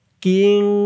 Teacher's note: নুন সাকিনের পরে ইকফার 15 হরফের এক হরফ শিন আসছে কিং নাকের ভিতরে লুকিয়ে গুন্নাহ করে পড়তে হবে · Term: ইকফা গুন্নাহ